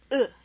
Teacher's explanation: you'll probably make a sound like uh and that's exactly the sound of this vowel that does not exist in English